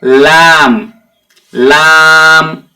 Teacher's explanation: জীবের আগার কিনারা এবং সামনের উপরের দুই পাশের দাঁতের গোড়ার সাথে